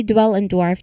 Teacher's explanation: Here the D sound transitions directly into the W sound. So remember the W involves rounding your lips. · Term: DW cluster